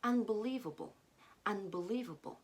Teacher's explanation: we stress the first syllable and then we make the rest of the syllables weak